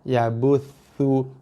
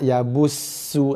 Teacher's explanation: Ini huruf tha, hujung lidah sentuh gigi atas.